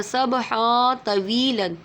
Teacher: تنوین کے بعد دو زبر کی تنوین ہے، اس کے بعد تو آ رہا ہے تو اخفا ہوگا، اس لیے غنہ کریں گے